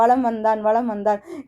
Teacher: தனக்குரிய அரை மாத்திரையிலிருந்து குறைந்து 1/4 மாத்திரை அளவில் ஒழிக்கிறது தான் இந்த மகர குறுக்கம்